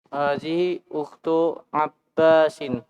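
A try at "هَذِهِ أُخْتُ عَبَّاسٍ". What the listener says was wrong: Naam, sahih.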